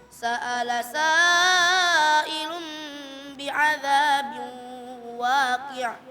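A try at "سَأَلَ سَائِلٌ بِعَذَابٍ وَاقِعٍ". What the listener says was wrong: Baik, sa'ilun di sini seharusnya bacanya 4 atau 5. Tadi agak sedikit kurang ya. Jadi perlu disempurnakan lagi. Gak apa-apa, sempurnakan ke 5 harakat saja.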